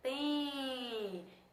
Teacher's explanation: é só um som de nasalização que ele dá no E. Não tem o som do M